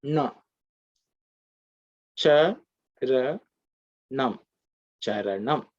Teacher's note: This gives you Nam, which is the cerebral Ta Varga nasal sound. So the tongue has to be bent and pointed up.